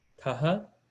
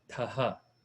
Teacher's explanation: So that's mahaprana tha with visarga.